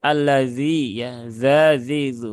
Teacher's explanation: ujung lidah ke gigi seri atas ya itu huruf dalal kemudian yasla ya huruf Shad huruf Shad nah ini juga beberapa · ujung lidah ke gigi seri atas ya. Itu huruf zal.